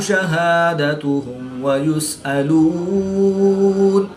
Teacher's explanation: میم ساکن کے بعد حرف با اور میم کے علاوہ حرف واو ہے تو یہاں پر اظہار شفوی ہوگا، غنہ نہیں کریں گے بلکہ میم ساکن کو ظاہر کر کے پڑھیں گے